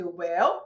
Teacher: when you say well, right, you go down, then you go up. That's the third tone in Chinese.